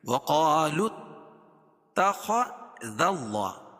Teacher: لام کو تا میں ملائیں گے وصل کی صورت میں، ٹھیک ہے. وَقَالُوا اتَّخَذَ اللَّهُ، خا کو پر پڑھیں گے.